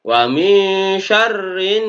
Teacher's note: Cara membacanya alnya ini langsung masuk pada nun. Makanya di sini ada tanda tasdidnya. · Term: alif lam syamsiyah